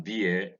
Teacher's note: the next diphthong is ear vowel 18 is the defunct ear it's a closed front centering diphthong